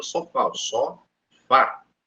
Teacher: com maior intensidade A exemplo a palavra só fal só fá E aí eu falei o fá com maior intensidade · eu falei o fá com maior intensidade. Então, quer dizer que é uma oxítono, beleza? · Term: oxítona